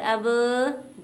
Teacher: با دونوں ہونٹوں کے تر حصے سے ادا ہوتا ہے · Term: حروف شفویہ